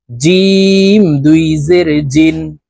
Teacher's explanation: জিহ্বার মধ্যখান থেকে জিম হরফের উচ্চারণ করব